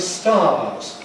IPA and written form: stɑːz (stars)